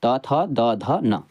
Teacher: दंत व्यंजन यानी कि द दांत से निकलने वाला आवाज